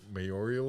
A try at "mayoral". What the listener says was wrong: No, not mayoral. No, mayoral. You added an extra I in there.